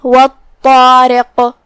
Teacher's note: طا کی ادائیگی زبان کی نوک اور اوپر کے دانتوں کی جڑ سے ہے. طا حروف تفخیم میں سے بھی ہے تو ہم اسے بھاری آواز میں منہ پھلا کے پڑھیں گے، جو کہ اس کے بعد مد الف ہے.